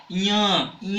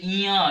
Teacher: इसमें नाक का प्रयोग होता है ज्यादा, इसको नासिक वर्ग कहते हैं, यानी नासिक स्थान कहा जाता है।